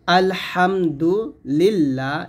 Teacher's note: আলহামদুলিল্লাহ, এখানে লা বলতে হবে, কারণ এই যে আল্লাহ শব্দ লামে ডানে জের আসছে পাতলা